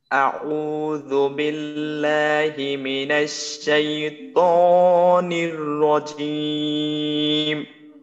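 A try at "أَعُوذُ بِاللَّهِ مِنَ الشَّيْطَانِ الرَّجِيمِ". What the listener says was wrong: এখানে তে এক আলিফ টান আছে না। আউ আউযু বিল্লাহি মিন,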